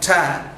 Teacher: During the production of sound ta, you have the tip of the tongue touches the teeth ridge.